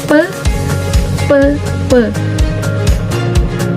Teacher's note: Bibir atas dan bibir bawah menempel. Menempel. Pe pe dan ada udara yang keluar gitu.